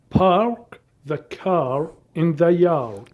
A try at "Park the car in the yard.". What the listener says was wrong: Pretty good, but I want you to open your mouth more. Bigger, bigger. Park the car in the yard. And be careful with your tongue. Relax your tongue.